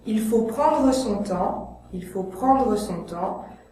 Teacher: je prononce le E à la fin de « prendre », car c'est la règle des 3 consonnes